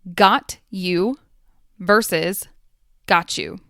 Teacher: the T at the end of got disappears and so does the Y at the beginning of U they blend together and create the CH sound